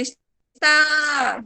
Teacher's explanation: Está, demora mais, é o tá. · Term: oxítona